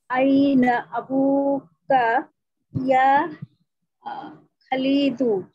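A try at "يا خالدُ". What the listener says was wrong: ইয়া খালিদু টান দিয়া ইয়া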